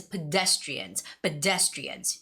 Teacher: So the spelling goes pedestrian, but like I said, the stress is pedestrians. Pedestrians. It goes on the second syllable.